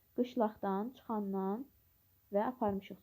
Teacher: Sözlərdən üçündə qalın dodaqlanmayan saitlər işlənib